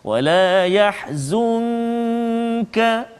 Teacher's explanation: nun mati bertemu dengan kaf, maka ikhfa hakiki sebagaimana yang kita telah belajar sebelum ini, misalnya kita kena baca dengan dengung, bacaan kita dengung dengan kadar 2 harakat.